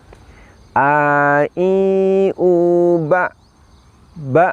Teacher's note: ba Hai suara terhenti nafas juga terhenti inilah untuk huruf hamzah Jadi kita ucapkan Hamzah dari tenggorokan paling bawah ketika diucapkan itu suara berhenti nafas juga berhenti · huruf hamzah kita ucapkan dengan cara menahan nafas dan juga menahan suara